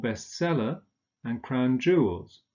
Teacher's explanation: both are stressed on the second element